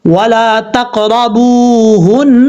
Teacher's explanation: یہاں وہ مدہ ہے 1 الف کی مقدار لمبا کر کے پڑھیں گے. نون کے اوپر شد غنہ کریں گے 1 الف کی مقدار